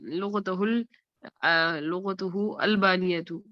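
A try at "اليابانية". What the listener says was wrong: بانیہ کیا ہوتا ہے؟ یابانی ہوتا ہے. یابانیت, صحیح ہے, بانیہ نہیں, دو با نہیں لگائے نا, الیابانیت.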